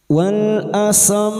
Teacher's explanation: mim dengan tashdid adalah ghunnah musyadadah, disenandungkan selama tiga harakat